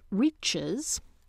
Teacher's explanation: the something that gets inserted is that high central vowel it and what's the environment where it happens following a strident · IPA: [ritʃɨz]